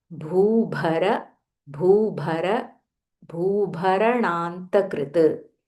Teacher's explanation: Both the bhas are Mahaprana.